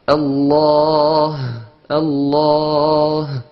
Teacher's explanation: Donc fond de la gorge, hamza et ha.